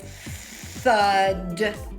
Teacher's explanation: in the unvoiced pronunciation the tongue is way out of my mouth